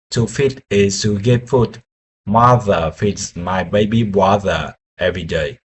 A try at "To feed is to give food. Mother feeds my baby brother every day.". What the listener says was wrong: That's got a lot of mixed up words. You're saying fit instead of feed and water instead of brother. Let's break it down again. Slowly.